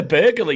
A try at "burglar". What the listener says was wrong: No, it's not burglar. It's burglar. There's no extra U in it. It's burglar.